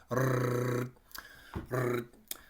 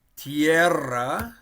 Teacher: the double R, well, that's another one that we're going to roll or trill